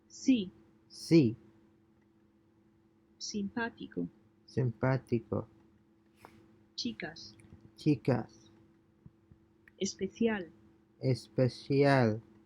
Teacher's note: the Spanish S is pronounced like the S in the word salt, except it is a bit shorter